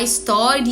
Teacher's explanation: a gente tem que juntar o i e o a para poder falar história